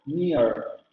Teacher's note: Vean cómo la vocal media es imperceptible. De hecho, parece que se pronuncia como lo está diciendo solamente near. · En el inglés americano existe el diptongo y la última vocal es rótica.